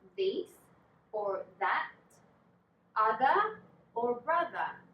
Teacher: your vocal cords if you put a hand on your throat you will notice that you will feel a vibration a bit like a bee